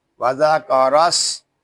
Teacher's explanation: سین حروف صفیریہ میں سے ہے، اس میں سیٹی کی آواز آئے گی